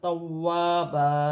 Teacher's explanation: واو مشدد ہے، واو کو جما کے 2 مرتبہ سختی کے ساتھ، توابا، واو کی صورت میں 2 زبر کی تنوین 1 الف مدہ میں بدل جائے گی۔